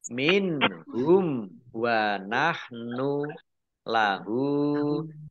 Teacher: Nah, kalau tidak berhenti, maka mim sukun bertemu dengan huruf wawu, ini bacaan izhar safawi, dibaca jelas